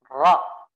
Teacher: Harus ada getaran ya, dan itu getarannya tidak boleh terlalu banyak ya, sedikit aja. Dan juga membaca ro ya harus disamarkan.